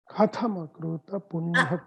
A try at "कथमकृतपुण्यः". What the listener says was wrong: Ka is Alpa Prana. Ka is just Ka. Only Tha should be Mahaprana. So that happens, that tends to happen sometimes because we want to chant one letter as Mahaprana, inadvertently we interchange it with the previous letter or next letter.